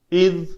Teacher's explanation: زال کو زا سے علیحدہ رکھنا ہے، کیونکہ اگر دونوں دانت جوڑ لیں گے تو وہ زا بن جائے گا، ایسا نہیں ہونے دینا.